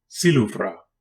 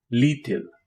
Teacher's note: It is a coronal lateral approximant, usually dental, though sometimes alveolar depending on the dialect, pronounced like the L in liquid.